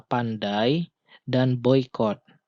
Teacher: suku kata dai memiliki dua huruf vokal berbeda yang diucapkan sekaligus. Nah, bunyinya disebut dengan bunyi diftong.